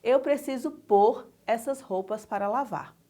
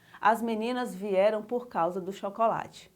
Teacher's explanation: a pronúncia do pôr com acento circunflexo é um pouquinho mais fechada